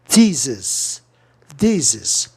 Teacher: Thesis, thesis, duas sílabas ou consoante no meio, o E tem um som de I.